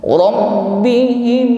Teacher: mim sukun bertemu mim, ditahan sampai berdengung